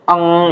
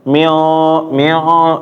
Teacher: ya misalnya ng ataupun ikhfa syafawi ya turunannya. Nah, jadi ya kalau misalnya kita ngucapin eng itu kan kita rasain hidung kita getar ya